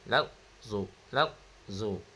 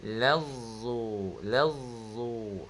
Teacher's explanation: Huruf ta bersifat asyiddah terputus. Kalau huruf zad rakhawah mengalir